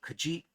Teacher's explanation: the accent jumps to the last syllable if the second to last syllable contains an e with the schwa sound. So in example 1b, it's not keji, it's keji for vile.